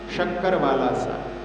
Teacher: एक होता है तालव्य श, जिसको कि जहाँ तालु है, जहाँ अपनी जीभ का ऊपरी भाग जब ऊपर टच होता है तो वो निकलता है